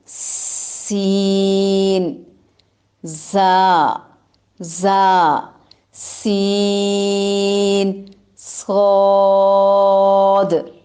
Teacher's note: جبکہ زا میں، سین میں اور صاد میں زبان کی نوک اندر کی طرف سے ثنایا علیہ اور سفلی کے سروں کو ٹکرائے گی · زا اور سین جو ہے یہ باریک حروف میں سے ہے، صاد جو ہے یہ موٹے حرف میں سے ہے